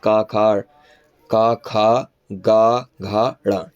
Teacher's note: यह आपके कंठ से बोले जाते हैं। कंठ के साथ जीभ का निचला भाग भी इसमें यूज होता है।